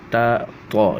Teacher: ہم آواز حروف یعنی کہ ایک جیسے حروف تا طا یہ ایک ہی جگہ سے ادا ہوتے ہیں، ٹھیک ہے، لیکن طا کو جو ہے وہ موٹا کرنا ہوتا ہے